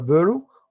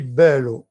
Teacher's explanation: le E placé devant 2 L est un E ouvert. C'est pour cela qu'on avait entendu un E accent grave.